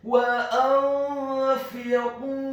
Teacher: Apabila ada huruf nun yang sukun atau tanwin, dalam hal ini adalah huruf nun yang sukun bertemu dengan huruf-huruf ikhfa, dalam hal ini adalah huruf fa, maka hukum bacaannya adalah dibaca secara samar-samar, ikhfa